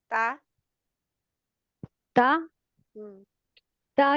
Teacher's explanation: असल में आपके जो ऊपर वाले दो दांत है उसके जो उभरा हुआ हिस्सा है उभरा हुआ वहां पर लग रहा है